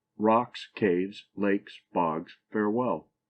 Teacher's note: It is a foot with both syllables accented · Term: spondy